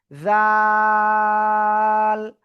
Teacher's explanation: জিহ্বার আগা উপরে দুই দাঁতের আগায় লাগাবেন, লাগিয়ে নরম করে 1 2 3 আলিফ টেনে পড়বেন